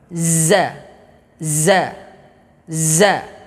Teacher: ujung lidah menyentuh kepada halaman gigi seri bawah bagian belakang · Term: huruf Z